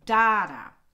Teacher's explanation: the trochee is one stressed beat followed by one unstressed beat